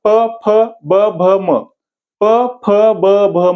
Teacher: ओठाला ओठ चिकटल्याशिवाय प बाहेरच पडत नाही बघा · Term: प वर्ग